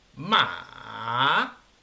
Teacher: Tiene que bajar y luego subir. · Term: tono 3